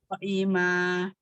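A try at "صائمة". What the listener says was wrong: Pendek, Umi. So'ima. So'ima.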